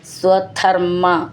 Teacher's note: ഹൃദാശയ അവിടെ വിസർഗം ഇട്ട് ചൊല്ലുകയാണെങ്കിൽ പിന്നെ ഒരു സ എന്ന് മതി സ്വധർമ്മ ധ എന്നുള്ള അക്ഷരം നന്നായിട്ട് ഊന്നി പറയണം മ എന്ന് ഡബിൾ ആയിട്ടുണ്ട് · മാന്ന് ഡബിളായിട്ടുണ്ട്, മെല്ലെ ഊന്നി പറയണം